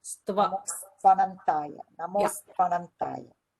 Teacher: Namostu Anantaya becomes Namostvanantaya.